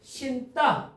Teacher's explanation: 니은하고 디귿이 만나 갖고 신따 쌍디귿으로 바뀌어 있어요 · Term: 된소리